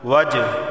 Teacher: جیم حروف قلقلہ میں سے ہے، با جیم دال قاف تو یہاں قلقلہ ہوگا